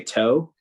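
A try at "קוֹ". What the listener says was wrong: It's a K.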